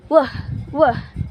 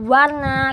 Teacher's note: ada gesekan sedikit dari bibir bawah dan juga gigi atas.